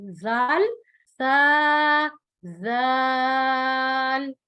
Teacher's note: दांतों के दरमियान में जबान रखकर नरमी से अदा करना है, और इनको अदा करते हुए सीटी की आवाज नहीं आनी चाहिए